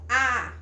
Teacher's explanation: boca logal a por exemplo falta a boca bem aberta a é uma vogal baixa por quê Porque minha língua está abaixada a vogal I por exemplo alongar o alta porque embora o